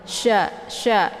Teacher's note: tafasy itu menyebarkan angin keluar dari mulut